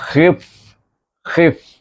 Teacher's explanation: terus pada gigi atas pergi kepada bibir bawah